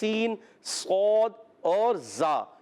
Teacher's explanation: سین سیٹی والے حروف میں سے ہے اور حروف اصلیہ میں سے مخرج کے لحاظ سے حروف اصلیہ 3 ہیں, زا, سین, صاد. یہ زبان کی بالکل باریک نوک اور ثنائے سفلا اور ما اتصال ثنائے علیہ یعنی نیچے اور اوپر والے دانتوں کے کناروں سے ادا ہوتے ہیں